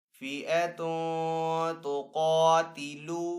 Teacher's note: قَدْ كَانَ لَكُمْ آیَةٌ فِی فِئَتَیْنِ التقطا فِئَةٌ تُقَاتِلُ، تا کے اوپر یہاں پہ دو پیش ہے، دو پیش کو تنوین کہتے ہیں، تنوین کے بعد تا حروف اخفا میں سے تو یہاں پہ اخفا والا غنہ کریں گے۔ قاف حروف مستعلی میں سے تو قاف کو یہاں پہ پر پڑھیں گے۔